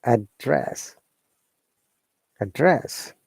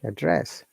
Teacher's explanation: we need to be careful when we use as a verb our tone should be upper intonation and we're stressing the second part